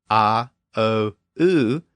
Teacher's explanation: if you say those three sounds in succession a o o you can feel it raise in the back of the mouth